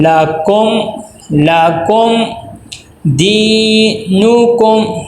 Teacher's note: یہاں پہ اظہار ہوگا کہ میم ساکن کے بعد با اور میم کے علاوہ کوئی حرف آ جائے، یہاں پہ دیکھیں دال آ گیا تو یہاں پہ ہم اظہار کریں گے، یعنی میم کی آواز کو ناک میں نہیں لے کے جائیں گے، بالکل میم کی آواز جب ہو رہی ہو تو رک جائے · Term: اظہار شفی